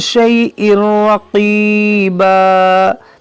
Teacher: تنوین کے بعد راہ یہاں پر ادغام کریں گے بغیر گنہ کے